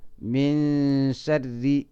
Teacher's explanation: xukunkana waxa la yiraahdaa ikhfa, marka nuunki iyo shinki wala isdhex gelinaya oo la isku dhex qarinaya la isku ikhfaynaya